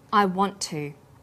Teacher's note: The final t sound in want is held slightly longer on the tongue. Then to is pronounced. The t sound is pronounced only once. I want to. This type of linking is called consonant plus same consonant linking.